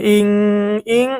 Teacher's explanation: হামজা নুন জের ইং, ইং ইকফার গুন্না, নুন সাকিনের পরে ইকফার হরফ কাফ এসেছে